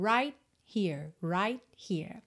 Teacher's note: o t de right a gente não escuta nada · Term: consoante oclusiva